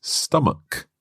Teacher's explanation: this word ends with ch and that's normally pronounced ch like church or chicken but here it's stomach a hard k sound